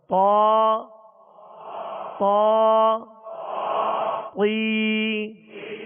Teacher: اب طا میں جب طا ادا کریں گے، یعنی زبر اس کی کھڑا زبر ادا کریں گے تو آواز اور منہ دونوں کھولیں گے اور اس کو پر پڑھیں گے، لیکن ہونٹ گول نہ ہو۔